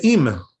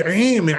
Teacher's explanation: the aleph is an A sound, very simple, and the ayin is in the throat. It's in the throat.